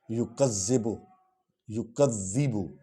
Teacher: زال پر شد ہے، اس پر سٹریس آئے گا، زور آئے گا۔ یکذب، با جو ہے یہ حرف شفوی ہے، با 2 ہونٹ ملتے ہیں تو با ادا ہوتا ہے۔